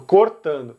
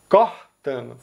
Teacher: E por último aqui, o último ponto é sobre, novamente, as vogais, que aqui a gente notou que quase todos os estados vão pronunciar a primeira letra O dessa palavra com O fechado, cortando. Mas os estados do Nordeste, principalmente aqui Pernambuco e Ceará, vão pronunciar com o aberto.